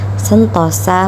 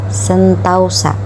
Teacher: perubahan dari vokal tunggal ke vokal rangkap ini masih diucapkan dalam satu Puncak kenyaringan sehingga tetap dalam satu silaba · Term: diftongisasi